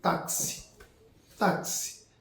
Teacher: Perceba que esse X, ele tem som de ks. Aí, é como se fosse KS. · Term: dífono